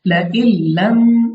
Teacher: तो हमारे पास नून यहाँ पे हमने साकिन रखनी है, यानी नून को हमने नहीं पढ़ना, हमजा को लाम से मिला देना है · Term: इदगाम